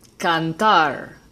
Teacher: The green word is aguda, cantar. The emphasis is on the last syllable.